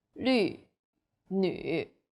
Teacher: The U sound is like the French U. Your lips should be round and pouting.